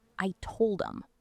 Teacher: If I want to say, I told him, I usually drop the H. I push the words together so it sounds like I told him.